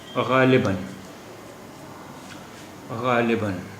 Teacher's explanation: تنوین یعنی الف پر جب دو زبر ہوتے ہیں ایک ساتھ تو اسے تنوین کہتے ہیں، اور پھر وہاں پر الف کا جو پروننسیشن ہے، جو تلفظ ہے، جو اچارن ہے، وہ ان ہو جاتا ہے، ان ہو جاتا ہے.